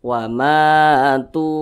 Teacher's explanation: Mad Thobi'i panjangnya dua harakat atau kira-kira dua ketukan